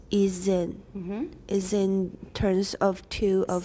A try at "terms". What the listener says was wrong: Say the word terms. I don't hear your M really clearly.